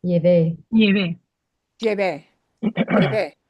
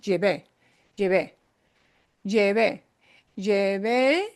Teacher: And we punch the E at the end.